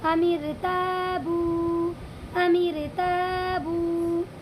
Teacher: اس والی را کو ہم باریک پڑھیں گے کیونکہ یہاں پر رائے ساکنہ سے پہلے میم کے نیچے زیر آیا ہوا ہے اسی لیے اس را کو باریک پڑھیں گے